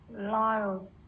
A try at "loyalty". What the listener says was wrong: À đúng rồi đó, loyalty, loyalty.